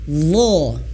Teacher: Huruf dha dia mengalir suara, bukan angin, bukan nafas ya. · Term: rikhwah